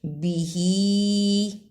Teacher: ہا کھڑی زیر ہی، لیکن اوپر چھوٹی مد ہے اس لیے اس کو لمبا کرنا ہے